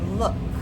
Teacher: So, it's look, but the K sound does not make a vibration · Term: no vibration